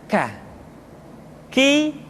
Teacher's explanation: huruf k diucapkan dengan mengangkat pangkal lidah kita ke posisi di depan huruf qaf